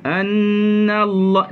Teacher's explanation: Bila nak naik kepada lafzul jalalah maka kena tebal naik. Annallah, na tu stay nipis, tapi nallah, lam itu kita tebalkan.